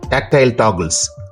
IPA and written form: ˈtæktəl ˈtɒɡəlz (tactile toggles)